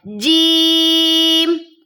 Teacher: اب اس کو چے نہیں پڑھنا، کچھ لوگ جیم کو پڑھتے ہوئے چے جیسی آواز نکال لیتے، نہیں، جیم۔